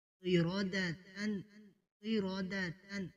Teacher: قاف کو موٹا کریں گے۔ آگے را کو پر کریں گے